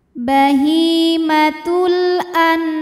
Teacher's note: bunyikan dengan jelas bahimatul lalu berikutnya ada hukum izhar halqi karena nun sukun menghadapi huruf halq atau huruf tenggorokan yaitu Ain maka nun sukun kita bunyikan dengan jelas